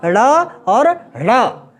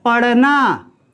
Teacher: वैसे व्यंजन जिनके उच्चारण में जीभ ऊपर को उठकर और नीचे को आए, उल्टी होकर नीचे को आए, अर्थात मूर्धा में टकराए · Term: उत्क्षिप्त व्यंजन